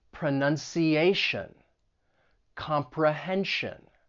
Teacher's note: So words that end in T-I-O-N or S-I-O-N, it's pronounced as shun, but the stress is going to come on the syllable before. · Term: syllable stress rule